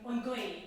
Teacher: we have a guttural sound at the start of the word because it's GH, so it would be like in Connemara or anywhere else, it's on goy, the wind, goy.